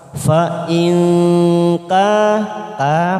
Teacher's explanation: nun sukun bertemu kaf ikfa abad, kita samarkan bunyi nun sukun 3 ketuk siap masuk pada huruf kaf.